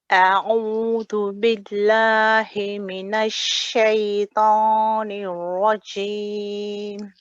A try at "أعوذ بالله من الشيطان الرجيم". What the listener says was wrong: Okay, so remember with the dhal, I want a lighter touch. When you say dhu, remember very tight, very light touch. At the moment, you're pressing a little bit firmly on the teeth. So I should hear the dhu, dhu.